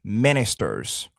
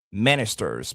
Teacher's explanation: le stress, l'accent sera sur la première syllabe